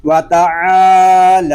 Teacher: حلق پر زور دے کر اس کو ادا کریں گے۔ جب عین کو ادا کریں گے تو ہمارا حلق جو ہے وہ تھوڑا سا گھومے گا